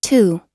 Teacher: É um som mais aspirado, é um T aspirado, vamos dizer assim, com bastante ar. Então, ao invés de falar tu, seria tu.